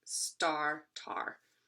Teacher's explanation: the first consonant s was dropped to become tar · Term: consonant cluster reduction